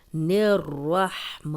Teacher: را کو موٹا پڑھیں گے دونوں بار کیونکہ را پہ زبر ہے، اور ہا کی آواز آنی چاہیے.